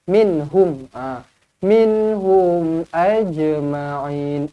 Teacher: Min, nun mati izhar halki, hum mim mati izhar syafawi. Tapi kedua-duanya izhar, kedua-duanya kena dimatikan dengan jelas dan teranglah. Minhum. Minhum ajma'in.